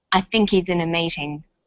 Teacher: The word think is stressed in this sentence, and he's is unstressed. When these words are linked, the h is dropped. In spoken English, we would say, I think he's in a meeting.